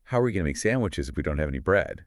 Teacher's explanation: bread Falls because it's new information related to the sandwiches it's like the intonation is guiding The Listener letting them know